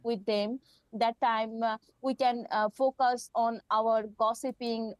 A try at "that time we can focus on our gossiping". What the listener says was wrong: So the speech just sounds a little bit mechanical. We've lost intonation there.